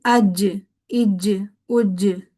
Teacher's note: जीम पर कलकला यानी कि जीम की आवाज पलट कर जरूर आनी चाहिए। · تو شین کے ساتھ ایک اور رننگ ساؤنڈ ہمیں دینا ہے، لیکن اس کو پلٹ کے آواز شین کی نہیں آنی چاہیے۔ جیم پر قلقلہ یعنی کہ جیم کی آواز پلٹ کر ضرور آنی چاہیے